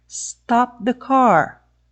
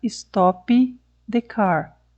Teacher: eu obedeci as duas fases da produção do stop que foi o bloqueio da passagem de ar e o aumento da pressão do ar dentro da boca mas não houve a liberação do som